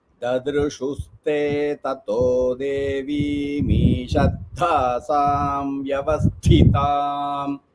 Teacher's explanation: So devim and ishat we combine as devi mishat. So you should not say devi me, then you give a gap.